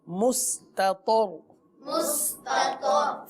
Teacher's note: مستطر مس پڑھیں گے یعنی سین باریک،